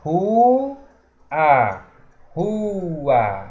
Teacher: O U se separa do A, acontece o hiato.